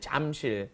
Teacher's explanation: Notice it's not spelled Jamsil, it's Jamsil is the spelling, but the pronunciation, of course, is right in between that J and that CH